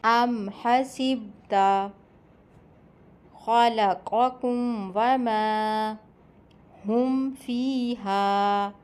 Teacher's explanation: میم ساکن کو بغیر غنّے کے بالکل صاف اور ظاہر کر کے پڑھا جاتا ہے۔ اسے اظہار شفوی کہتے ہیں۔